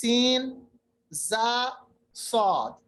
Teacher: आवाज जो है दांतों के बीच से निकलती है जो तेज होती है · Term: सफीर